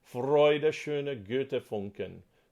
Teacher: you want to get a good rolled R going. The F a little bit before the beat and a good rolled R